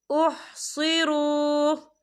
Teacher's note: लिल फुक़राइल्लज़ीना उहसिरू, या देखिए यहाँ पर वाव मद्दा हो रहा है, वाव साकिन से पहले पेश है, तो हम इसे 2 या 3 हरकत के बराबर खींच के पढ़ेंगे।